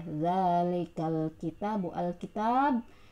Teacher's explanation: al di sini adalah alif lam qamariyah, kebalikan dari asyamsiyah. Alif lamnya harus dibaca jelas. Dzalikal kitabu, taknya 2 harokat juga, mad tabi'i ya, fathah berdiri.